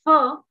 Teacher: So we say that if you want to say fur, it's you have upper teeth and lower lip coming together, and there is a kind of you can sustain the pronunciation of fur, or say that doesn't happen if you want to say toe.